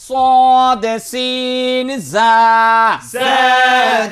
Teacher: জিব্বার আগা সামনের নিচের দুই দাঁতের আগার সঙ্গে লাগাইয়া